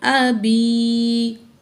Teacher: यदा, हमज़ा ज़बर आ, बा ज़ेर या बी, अबी। या साकिन है, माँ कबल ज़ेर है, या मद है, 2 अलिफ के बराबर खींच के पढ़ेंगे।